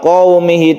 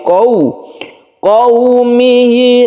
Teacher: qau menjadi u jangan o